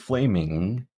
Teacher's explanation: if I put my fingers in front of my nose, flaming, you can kind of feel air come out of your nose. So this is a nasal sound, and we use this symbol.